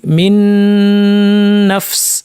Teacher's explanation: সেটা না করে আমরা দুইটাকে যুক্ত করে তাসদীদযুক্ত একটি নুন বানিয়ে লম্বা গুন্নাটাকে লম্বা করে দিয়েছি, মিন নাফস এভাবে পড়েছি। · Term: গুন্না সহ ইদগাম